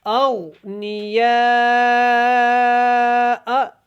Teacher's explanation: غین کو بھی آپ نے موٹا پڑھنا ہے، باریک نہیں پڑھنا